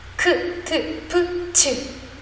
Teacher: 거칠기도 하고 긴장도 되는 거센 소리